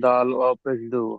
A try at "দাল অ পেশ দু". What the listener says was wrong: দাল পেশ দু নয়, দাল অ পেশ দু। ও মাত্রা একটু টেনে পড়েন জি, আস্তে আস্তে দেখে দেখে